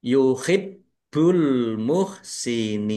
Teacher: Baknya dibaca double, ada tasdidnya, ditekan dan ditahan biar tampak doublenya